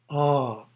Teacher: The first syllable is A, pronounced as the English word ah, but prolonged